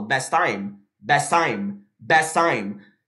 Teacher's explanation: Eu não preciso falar o T duas vezes, eu falo best time, best time, best time.